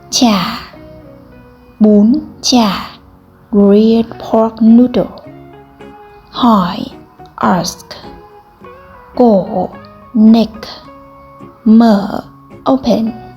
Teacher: The tone hỏi or the tone asking indicates a questioning tone with a slight rise and then a fall.